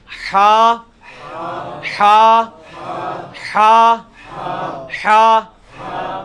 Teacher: اچھا جی، اس کے بعد آپ آ جائیں یہ مشکل 3 حروفوں میں سے ہا، حلوائی والا جو ہا ہے، یہ وسط حلق سے یعنی حلق کے درمیان سے نکلتا ہے. یہ کبھی آپ وہ گلے والی ٹافی کھائیں نا، وہ والی آواز ایکزیکٹ بالکل کلیئر وہاں سے جو نکلتی ہے نا، یہ ہا کا مخرج وہی ہے.